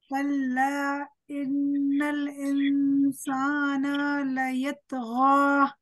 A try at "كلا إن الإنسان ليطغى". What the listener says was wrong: Don't stretch the noon of insan. كلا إن الإنسان ليطغى.